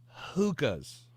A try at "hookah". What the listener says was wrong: Hookah. Not hookah. You need a little more who in your hookah.